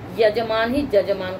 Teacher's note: जब ज्यादा जोर देते हैं तो वही य का श्रवण ज की तरह होने लगता